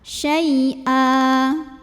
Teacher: Maka cara bacanya fathah tanwin ini berubah jadi fathah saja, barisnya jadi 1 dan kita panjangkan 2 harokat. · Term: mad iwad